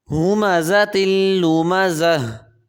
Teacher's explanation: ہاں کو حلق سے ادا کریں گے